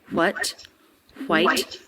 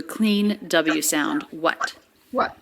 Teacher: it's much more common these days to just do a clean w sound